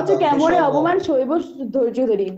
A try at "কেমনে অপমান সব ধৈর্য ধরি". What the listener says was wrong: শৈব তো নাই, আছে তো দন্তেশ ব, তাহলে উচ্চারণ হবে সব। সব মানে শৈব। কেমন এই অপমান সব ধৈর্য ধরি।